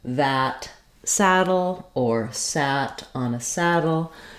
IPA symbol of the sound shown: æ